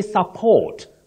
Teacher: the stress is on the second syllable support whether it functions as a verb or a noun but